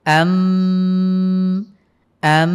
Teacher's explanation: এরপরে দেখুন কি আছে, আমবাতনা ফিহা, এখানে নুন সাকিনের পরে বা এসেছে, আমরা এটাকে মিম দ্বারা পরিবর্তন করে পড়ব। আম আম, আপনারা খেয়াল করছেন এখানে কিন্তু আমি মিম পড়ছি, নুন সাকিনের বদলে মিম উচ্চারণ করতে হবে।